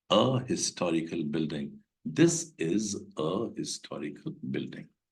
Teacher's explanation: Here H is accented, it is not mute, it is pronounced very well.